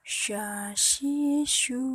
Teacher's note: dikeluarkan dengan menyentuhkan Tengah lidah dengan langit-langit diucapkan dengan mengalir udaranya dan nafasnya